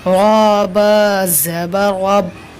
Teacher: जिस रा पर ज़बर या पेश हुआ रा पुर होगी तो पुर होगी यहाँ रा।